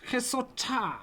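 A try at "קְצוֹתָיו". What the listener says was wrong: So this is a kuf, ki, and then the last bit is pronounced tav. Kitsotav.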